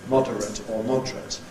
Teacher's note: You can get compression with the adjective, [ ˈmɒdərət ] becomes [ ˈmɒdrət ]